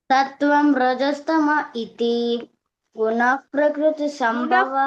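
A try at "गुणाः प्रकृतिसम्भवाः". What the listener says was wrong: కాదు, గుణా ప్రకృతి, నాకే దీర్ఘం ఉంది. గుణా ప్రకృతి సంభవాహ.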